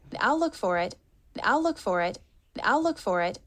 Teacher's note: she does a light release of a true T